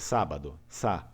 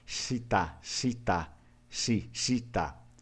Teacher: Português tem um S leve. O Vêneto não tem esse S leve. É um S mais sujo, mais é realmente carregado, sibilante, né? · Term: S do Vêneto